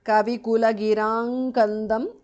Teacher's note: because of sandhi anuswara changes to nga there